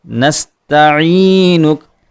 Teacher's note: نستعینک عین حلق کے بیچ والے حصے سے، اور اس کے بعد لفظ یا ہے اور عین کے نیچے زیر ہے، تو یہاں لفظ یا کو حروف مدہ میں شمار کیا جائے گا اور آواز کو تھوڑا کھینچا جائے گا۔